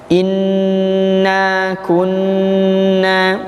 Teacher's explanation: nun yang bertasydid, maka ditahan. Gunnahnya dua harokat.